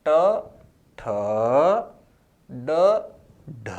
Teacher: दूसरा और चौथा आपको ज्यादा समय में बोलना है, पहला, तीसरा और पांचवा आपको कम समय में बोलना होता है।